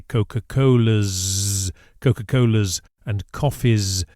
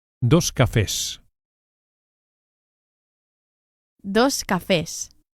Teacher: always pronounce the plural Spanish S as s and not z with the voice, as we do in English after vowels.